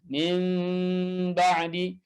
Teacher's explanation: Ya, kalau kita biasa membaca huruf mim dengan bibir yang kuat dan rapat, ya, maka ketika disamarkan dan ikhfakan, maka mimnya dilonggarkan, ya, dan direnggangkan sedikit · Yang kita lakukan adalah dengan melemahkan makhraj mim tersebut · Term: iqlab, samar huruf mim